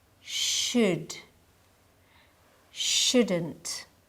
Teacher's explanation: notice how I pronounce should and shouldn't. The L is silent.